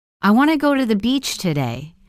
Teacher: The small words like to, the, and today are less stressed.